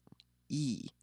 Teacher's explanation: your tongue is at the top of your mouth as far forward as it can go without sticking out of it